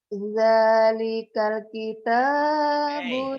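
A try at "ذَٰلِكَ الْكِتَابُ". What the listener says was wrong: Jangan sepet. Jadi kal. Nih, L-nya kayak ditahan. Dalikal kitabu.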